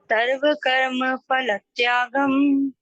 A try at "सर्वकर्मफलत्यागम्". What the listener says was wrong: हाँ, देखो अभी हमने वही गलती की, सर्वकर्मफलत्यागम्। तो फा नहीं बोले इसको, फा, सर्वकर्म फल त्यागम।